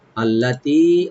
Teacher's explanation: লাকুমুল্লাতি, আল্লাতি লামে টান নাই, তি একালে টানবেন